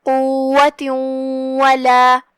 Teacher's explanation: کلمت قوة میں واو پہ تشدید ہے، 2 حرف کے برابر ہم واو کو پڑھیں گے۔ آخری میں تاء مدورہ ہے اور اس کے نیچے تنوین زیر ہے اور اس کے بعد حرف الواو آتا ہے۔